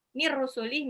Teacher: nun sukun ketemu ra, idgham bila ghunnah